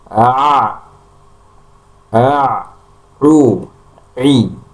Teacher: yang benar adalah semuanya seluruhnya keluar dari pertengahan tenggorokan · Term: huruf ain